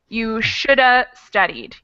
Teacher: that second helping verb gets dropped and squished completely. So it becomes the schwa sound, and most of the other parts of it just kind of get absorbed into the first word.